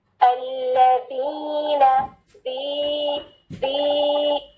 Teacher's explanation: 2 counts, کیونکہ یہ یا مد ہے, اور نون کی فتحہ صرف 1 count